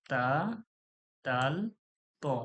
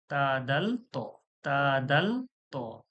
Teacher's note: জিহব্বার আগা সামনের উপরের দুই দাঁতের গোড়ার সঙ্গে লাগিয়া উচ্চারণ হয়।